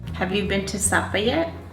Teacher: Americans tend to have a steady rise.